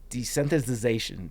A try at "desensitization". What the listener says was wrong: Desensitization. There's no th. Desensitization. There's no th. Desensitization.